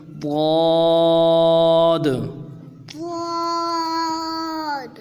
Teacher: ضاد کے آخر میں دال ہے، تو حرف قلقلہ ہے، تو قلقلہ کریں گے